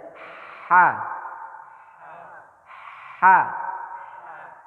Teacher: Ini letaknya di kerongkongan paling bawah. Kerongkongan paling bawah.